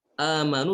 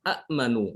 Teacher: Supaya ringan diucapkan, maka hamzah yang kedua itu diganti menjadi huruf mad ya. Karena harokat sebelumnya fathah, otomatis yang cocok adalah alif ya. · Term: mad badal